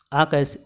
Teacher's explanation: ओ का उच्चारण स्थान है कंठहोष्ठ। तो कैसे है, ओ कैसे बनता है, तो ओ बनते हैं भैया आ प्लस ऊ से।